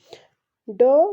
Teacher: इसका जो उच्चारण स्थान है मूर्धन्य है और यह सघोष और अल्पप्राण है